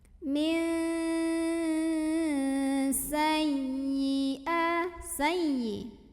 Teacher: Maka seperti hanya ikhfa ab'ad, nun sukunnya dibunyikan samar-samar menuju huruf sin sambil dengung. Nah, bedanya dengan yang tadi, kalau ini enggak terlalu ang. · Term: ikhfa ausat